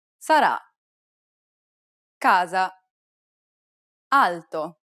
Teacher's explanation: It's identical to the A sound in the word father, except that it's held for a little longer. Open your mouth wide and let the air pour out.